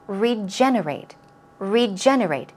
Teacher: Stress goes on the second syllable.